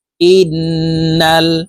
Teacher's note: ওয়াজিব গুন্না হরকতের বামে নুনের উপরে তাসদিদ আছে এই কারণে এই হামজা তাশদি নুনের সাথে নাকের পাশে থেকে গুন্না করে পড়বো গুন্নাটি তিন সেকেন্ড পরিমাণ ধরে রাখবো